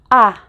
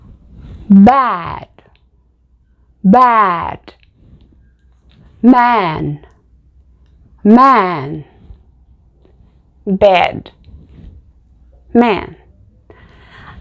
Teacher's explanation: Para produzir esse som, na minha opinião, você abre a boca para dizer A. Repara, A. A boca, ela abre. A. Só que aí, ao invés de pronunciar A, você fala E. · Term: primeira vogal aberta